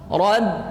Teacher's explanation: Ba-nya tipiskan karena huruf ba itu huruf syafatain, ya, bertemu bahagian hujung bibir atas dan hujung bibir bawah bagian luar, tipis dia. Rad, ya, jangan baca rob.